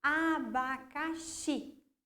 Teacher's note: Na última sílaba, xi. Então, essa é a sílaba tônica da palavra abacaxi, ok?